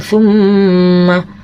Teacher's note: Apabila ada mim dan nun bertasdid, maka hukum bacaannya gunnah. Maksudnya mim dan nun bertasdid harus dibaca mendengung sepanjang satu alif atau dua harokat ya